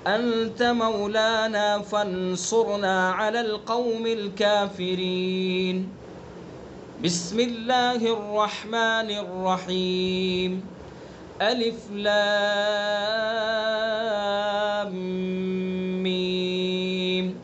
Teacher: سورت کے اخیر پر بھی وقف کر دیا کافرین پر، اور بسم اللہ الرحمن الرحیم اس پر بھی وقف کر دیا، اور سورت کو پھر الگ سے شروع کر دیا الف لام میم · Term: فصل کل